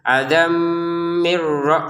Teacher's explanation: Jadi tanwin di sini bertemu mim ya. Maka dimasukkan adam dengan dengungan.